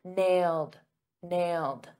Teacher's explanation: notice in the past simple that ed is a very soft D